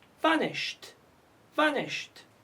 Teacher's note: It is voiceless, so we pronounce it vanished, vanished. Why we pronounce ed, t? Because it's preceded by sh